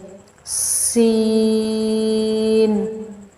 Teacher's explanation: سین میں آپ نے سیٹی کی آواز نکالنی ہے اور تھوڑا سختی سے پڑھنا ہے، اس کو تھا کی طرح نرمی سے نہیں پڑھیں گے۔